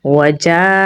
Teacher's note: جیم کو لمبا پڑھیں گے کیونکہ یہاں پر بڑی مد ہے، اسے مد متصل کہا جاتا ہے تو اسے ہم 4 سے 5 سیکنڈ لمبا پڑھیں گے